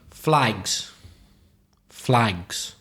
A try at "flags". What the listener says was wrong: Flags. Your vowel sound flags is Is a little bit different. Flags and flies. Flies, Flags.